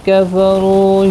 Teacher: کفروا را پیش کی وجہ سے پر پڑھا جائے گا، واو مدہ بھی ہے، ایک الف کی مقدار کے برابر کھینچ کر بھی پڑھیں گے۔